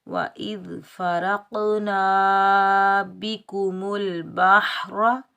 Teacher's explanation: रा हरूफ मुस्तअला में से है तो इसको पूरी पढ़ेंगे, मोटा पढ़ेंगे, बगैर खींचे पढ़ेंगे।